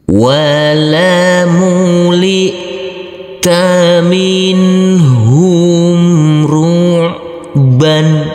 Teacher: Untuk huruf ain yang bersukun ini harus kita alirkan.